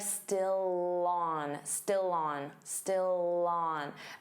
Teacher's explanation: Notice how still and on link together and you'll hear that L sound on on. So it will sound like still on.